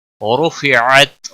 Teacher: را کو پیش کی وجہ سے پور پڑھیں گے ، رو واو مدہ ہے ایک الف کے برابر کھینچ کر